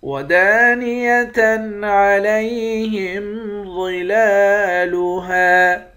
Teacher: دال کے بعد الف ہے، ایک الف کے مقدار کھینچ کر پڑھیں گے۔